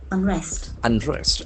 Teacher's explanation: Accent falls on second syllable.